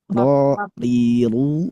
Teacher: Tafkhim itu datang dari apa? Datang dari pangkal lidah yang agak dinaikkan, didorong.